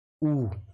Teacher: इनके उच्चारण में जो होंठ है हमारे वृत्तमुख या गोलाकार होते हैं, तो उन्हें क्या कहते हैं, वृत्तमुखी स्वर। जैसे आप बोलकर देखना ऊ, तो हमारे होंठ वृत्तमुखी हो जाते हैं, गोलाकार।